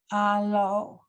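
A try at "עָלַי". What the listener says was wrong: Alai. Remember when you have the yud, just pronounce that.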